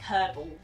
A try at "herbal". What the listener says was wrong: You said kerbal. We're going to have to rewind the video after this because you said kerbal.